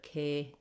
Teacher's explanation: saying that K first can help you make that nice long sliding gliding diphthong A sound